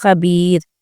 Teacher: تو یہاں پہ ہم رو کو باریک پڑھیں گے کیونکہ یائے مدہ ہے